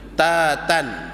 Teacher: huruf ta cukup kalau sekadar bila kita sebut ta tan, kita dah rasa ada angin. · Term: hamas